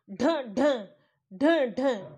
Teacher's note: एकदम ढ ढ ढ ढ इस तरीके से बोला जाता है एकदम ऐसा लगता है जीभ उसको फेंक कर के बोल रही है